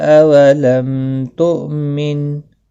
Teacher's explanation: اولم میم ساکن کے بعد تا آیا ہے، اظہار شفوی ہوگا